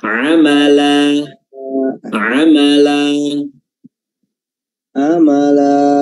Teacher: Amala Amala siap dua harakat aja pertama dan yang kedua itu jangan ada seakan-akan ada Hamzah sukun terakhir